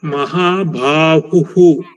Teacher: this ಹ ಇಸ್ ಮಹಾಪ್ರಾಣ ಬಟ್ ಬಾ ಇಸ್ ಅಲ್ಪಪ್ರಾಣ